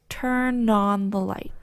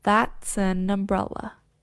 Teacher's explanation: we pronounce the words as if the consonant sound has moved from the end of the first word to the beginning of the next word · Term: consonant vowel linking